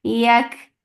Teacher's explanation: Yak for fatha open jaws, the sound of ya will be light, and kaf will get hum because whenever kaf is with sakoon, it gets hums